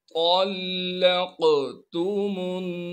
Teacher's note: क़ाफ पर क़लक़ला भी करेंगे। क़लक़ला कहते हैं हल्की सी आवाज़ को हिलाना।